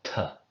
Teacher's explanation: a T followed by a puff of air, t. There's a normal T or D sound with a really breathy aftertaste or something. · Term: aspirate